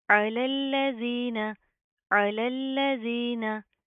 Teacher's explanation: जाल के ऊपर जुबान बाहर की तरफ आएगी, नरमी से अदा होगा, ठीक है। इसके अंदर आपने सीटी पैदा नहीं करनी।